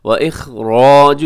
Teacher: وَإِخْرَاجُ اس میں خا موٹا پڑھا جائے گا